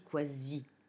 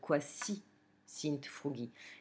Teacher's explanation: Vous avez ici une subordonnée hypothétique, parce que quasi, dans quasi, il ne faut pas oublier que, en fait, nous, en français, on a perdu ça de vue parce qu'on dit quasi. Mais en latin, on ne zozote jamais le S. On ne l'aspire jamais. Il est toujours sifflé.